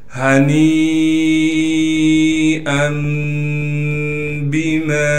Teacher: ہا کو صاف کر کے گلے سے نکالیں گے۔ گلے کا وہ حصہ جو سینے کی جانب ہے، نون کو یا مدہ سے ملا دیں گے اس لیے کہ یا مدہ ساکن ہے۔